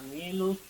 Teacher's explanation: harus mendesis karena di sini ada huruf shad